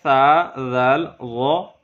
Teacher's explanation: اتے ہیں ثا ذ ان کا بھی ایک ہی مخرج ہے زبان کا سرا اور اوپر کے دانتوں کے اندرونی کنارے سے ادا ہوں گے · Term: حروف لسایہ